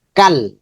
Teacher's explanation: এই কাফটা পরবর্তী লামের সাথে যুক্ত হবে